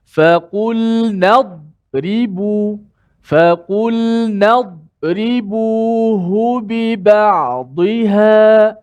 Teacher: Walaupun huruf dad tu kuat, besar, jangan qalqalahkan dia. Matikan dia dengan bunyikan huruf dad.